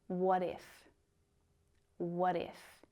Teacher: can you hear how what and if are connected in natural speech